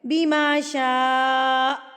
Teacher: 4 انگلیوں کو اتنا ٹائم آپ نے شاء کو کھینچ کے پڑھنا ہے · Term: 4 حرکات